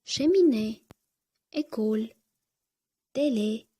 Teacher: aksent aigu belgisi e harfini qisqa va yopiq tarzda talaffuz qilishga yordam berib ishora qiladi